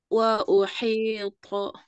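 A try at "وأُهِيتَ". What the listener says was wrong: Hi-nya kasrah, itmam harokatnya, vokalnya kurang. Barusan wa uhi kasrah. Wa uhito.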